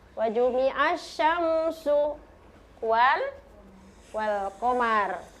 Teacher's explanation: Jadi huruf ro-nya jangan kasih tebal ya.